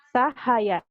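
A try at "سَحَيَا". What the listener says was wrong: Sahaya, tapi jangan sahaya ya. Kalau sahaya ada tasjid. Double, datar. Sahaya.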